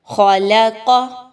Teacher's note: اب اس کو اکثر لوگ پڑھتے ہیں خالاقا، خالاقا، ایسے نہیں پڑھنا، بلکہ قاف کو موٹا، خا کو بھی موٹا